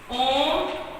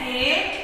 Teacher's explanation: ये हमारे हैं प्लुत स्वर, जिसमें 3 गुना टाइम लगता है।